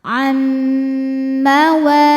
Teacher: Karena nun sukun menghadapi huruf mim, maka bunyi nun masuk ke mim, am disertai dengungan. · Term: idgham bi gunnah kamil